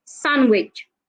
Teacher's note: the D is silent